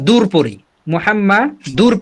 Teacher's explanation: দেখেন দাল দুই পেশ দুন, তানবিন আছে, তারপরেই র আসছে, এই জন্য আমরা দূর পড়ি, মুহাম্মা দূর পড়ি, তবে সেখানে গুণনা করি না। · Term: ঈদগামে বেলা গুণনা